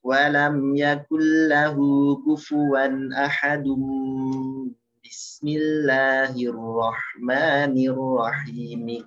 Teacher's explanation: Hati-hati ahadum ya, karena tanwin ketemu ba. Jadi iklab ya.